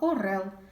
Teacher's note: останній звук в слові Орел звук л - це твердий приголосний